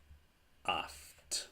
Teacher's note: to if the consonant that follows alpha epsilon is a T it's not voiced because I'm not using my vocal cords to make the sound my vocal cords are not vibrating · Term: voiceless